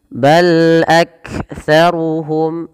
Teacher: Pada lafal bal lam sifat bainiyahnya tidak terlalu di alirkan suaranya dan tidak terlalu ditahan suaranya, tapi dia tengah-tengah.